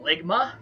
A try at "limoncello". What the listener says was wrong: When you initially pronounced it, it sounded like there's a G in there as well.